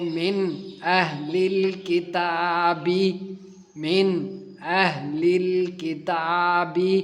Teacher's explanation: نون ساکن کے بعد حمزہ آیا ہے، اس کے لیے یہاں پر اظہار کا قانون لگے گا، نون کو ہم ظاہر کر کے پڑھیں گے۔